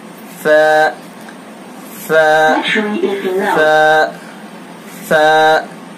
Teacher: اس کے اندر ذرا بھی سختی نہیں ہوگی، ذرا بھی سیٹی کی آواز نہیں ہوگی، بالکل نرمی کے ساتھ ادا کریں گے.